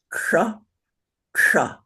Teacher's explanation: keep your tongue on that bump in the back of your mouth up on the roof with it folded flat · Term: paladal tongue position